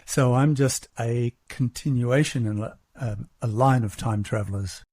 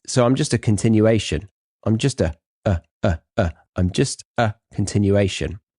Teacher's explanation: I like how he pauses after the first article here, the word or letter A, before the word continuation. And he actually uses the strong form A, not the weak form also known as the schwa sound